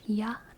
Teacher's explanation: YA is a diphthong. It's ya, not iya.